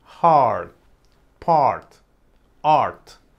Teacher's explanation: Cuando encuentres una A con una R y la sílaba tiene el stress de la palabra, entonces el sonido va a corresponder a otra vocal: ɑr.